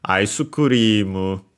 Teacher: So actually the aisu technically becomes unaccented because it's a compound, and yeah, you keep only the accent of the second part of the second word